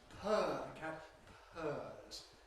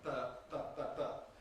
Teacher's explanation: French P has no aspiration, j'ai peur, il a peur, peur, peur, peur, peur.